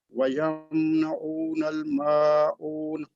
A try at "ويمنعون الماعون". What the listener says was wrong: Good, but be careful. Don't extend the sound of the meme here. We don't have غنة. Don't say ويمنعون الماعون. ويمنعون الماعون.